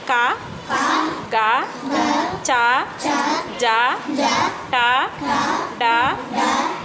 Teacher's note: ఇవన్నీ తేలికగా పలికేటువంటి అల్ప ప్రాణ అక్షరాలు